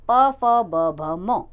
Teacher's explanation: पवर्ग प फ ब भ म, ओठ का ओठ से स्पर्श, ओष्ठ्य व्यंजन, यानी होंठ का होंठ से स्पर्श होना